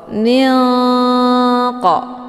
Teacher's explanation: nunnya disamarkan, kemudian siap-siap menuju ke huruf qaf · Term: ikhfa ab'ad